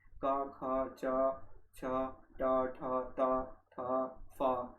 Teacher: अघोष व्यंजन जिनको उच्चारित करते समय स्वर तंत्रियों का घोष या नाद सम्मिलित नहीं होता है, अघोष कहलाते हैं। ठीक है, जिनमें कोई मतलब एक कंपनी, समझिएगा, कंपनता उत्पन्न नहीं होती।